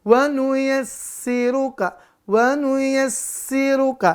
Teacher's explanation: jangan lupa sinnya bertasydid. Maka jangan lupa tekan dan tahan.